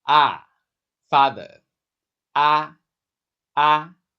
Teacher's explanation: It's a big round open sound.